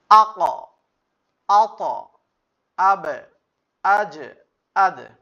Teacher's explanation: ধাক্কাটা উপরের দিকে যাবে। কফ ত উপরের দিকে যাবে, বা জিম দাল নিচে যাবে · এই পাঁচটি হরফের উপর যজম হলে ধাক্কা দিয়ে পড়তে হয় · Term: কলকলা